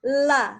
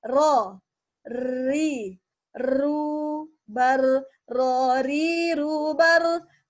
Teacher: Nah, dijelaskan bahwa ro itu ada takrir. Jadi ro itu dengan mengalirnya ro dengan bergetar ujung lidah. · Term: at-takrir